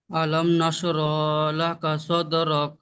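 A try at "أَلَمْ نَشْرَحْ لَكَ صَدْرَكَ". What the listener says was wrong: এখানে একটু ভালো এই জায়গায় একটু উচ্চারণটা ভালো করতে হবে। র হা জাবার রাহ, নাশরাহ পড়েন।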